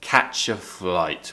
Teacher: we're going down at the end because we want to show that listener that we've finished speaking